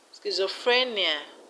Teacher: Schizophrenia, the stress is on free.